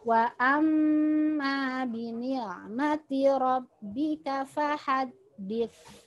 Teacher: Wa amma mim bertasydid, tahan 3 ketukan, ada alif.